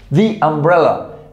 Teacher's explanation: se pronuncia algo intermedio entre una A y una O